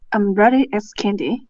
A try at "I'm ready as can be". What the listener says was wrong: Can be. Can, not candy. Can be. I'm ready as can be.